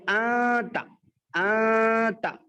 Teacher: نون کی آواز کو صرف ناک میں رکھیں گے، نو کے زبان تالو کو نہیں لگائیں گے. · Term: ناک میں آواز کو چھپانا